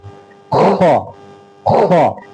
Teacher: یہ بالکل شروع والے حلق سے، منہ کی طرف سے شروع والا حلق